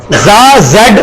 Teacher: زا زیڈ اس میں سیٹی کی آواز آتی ہے, اسی طرح زال میں آپ سیٹی کی آواز نہیں لانی تو پھر ہم نے زال پڑھنا ہے.